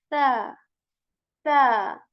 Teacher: it is articulated when the tip of tongue touches the tip of our upper teeth very softly. There isn't going to be whistle sound in it, okay?